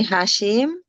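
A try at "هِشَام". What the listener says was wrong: Hisham. Kebalik. Hisham.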